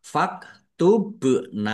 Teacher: ba sukun bacaan qalqalah dibaca memantul ditampakkan pantulannya